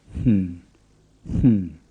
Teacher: It's like an English N, but with the first half of the sound whispered. So you start with and then change to n, and when you put the two halves together, you get hm. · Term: breathed N